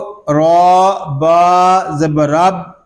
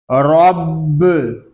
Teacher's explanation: اس کو را با زبر رب اس طرح نہیں پڑھیں گے، با مشدد ہے، اس کو جماؤ کے ساتھ ادا کریں گے